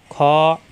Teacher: কণ্ঠনালীর মাঝখানে চাপ দিয়ে উচ্চারণ করতে হবে হা গরম বাতাসের সাহায্যে খ মোটা হরফ কণ্ঠনালীর শেষ অংশ থেকে